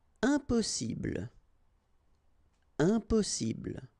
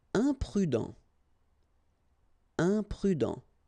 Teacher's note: when you add this im at the beginning of all the words, you will get the nasal sound un. Okay, you don't pronounce the m, but it goes like un.